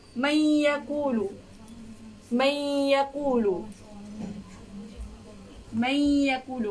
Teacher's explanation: Huruf nun ni dia nak masuk ke ya dan dia dengung. · Apabila keempat huruf ni bertemu dengan nun mati ataupun tanwin, dia harus diwajibkan baca dengan dengung, dengan baca daripada keluar daripada hidung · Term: idgham ma'al gunnah